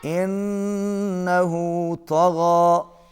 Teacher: نون پر تشدید ہے، غنہ ہوگا، آواز ناک میں جائے گی